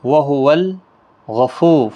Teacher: را پور پڑا جائے گا پیش کی وجہ سے